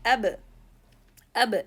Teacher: Okay, so we don't need this abba sound, just abba without opening the 2 jaws. If I do it with abu, with rounding the 2 lips forward, it will be accompanying with dhamma, which is wrong, not abu. It is ab, not abu. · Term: qalqalah